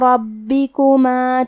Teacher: کلمت ربکما میں حرف الرا کو موٹی آواز میں پڑھیں گے اور حرف البا کی تشدید کو ظاہر کریں گے